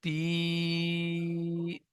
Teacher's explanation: ইয়া মাদ্দাকে এক আলিফ পরিমাণ টান দিয়ে পড়তে হয়